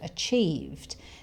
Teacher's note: he actually pauses when he says this word, achieved. So in a way, he wants to stress this word.